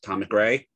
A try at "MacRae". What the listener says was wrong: It's English from the Scottish, but it's Mook, even though it is spelled Mac.